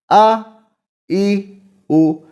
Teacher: الف مخرج منہ کے خالی حصہ کی ہوا سے ادا ہو رہا ہے اور یہ غیر مدہ ہے۔ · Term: حروف ہوائیہ